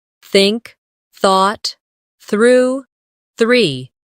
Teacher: put your tongue lightly between your teeth and push the air out for the soft th in think